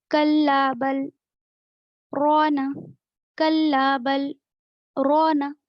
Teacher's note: میں کیسے بل کے بعد رکی ہوں لیکن میری سانس نہیں ٹوٹی، میں صرف تھوڑی دیر کے لیے رکی ہوں، خاموش ہوئی ہوں لیکن سانس نہیں ٹوٹی.